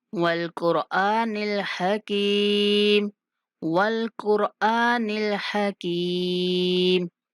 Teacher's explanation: काफ और रा को मोटा पढ़ेंगे